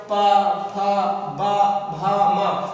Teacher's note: आप जब बोलते हैं तो ऊपर और नीचे दोनों के जो ओष्ठ हैं वो आपस में क्या होते हैं, स्पर्श करते हैं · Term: ओष्ठ व्यंजन